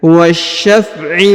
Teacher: huruf Sya memiliki tanda tasdid maka ditahan dan ditekan